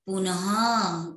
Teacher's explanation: विसर्ग में ह की ध्वनि आती है